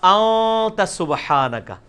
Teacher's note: اخفا اسے کہتے ہیں کہ خفی کر کے پڑھ رہے ہیں، نون پورا واضح نہیں کر رہے